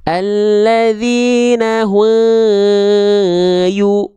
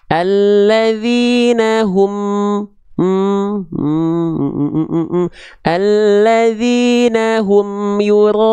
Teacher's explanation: tapi emnya jelas kan, nempel dari bibir, idhar syafawi kan.